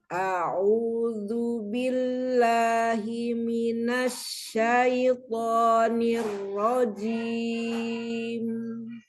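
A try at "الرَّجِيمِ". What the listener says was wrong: Nirrojim. Ro-nya jangan naik. Nirrojim.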